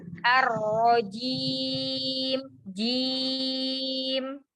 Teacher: Ahsan, jimnya lagi dikuatkan, ditempelkan tengah lidah bersama langit-langit atas